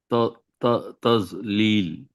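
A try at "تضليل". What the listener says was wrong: tadlil, it's da. Dad sound is different from va. We have to make our tongue not touching our two front teeth to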